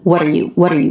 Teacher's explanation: the word you said really quickly she doesn't reduce the vowel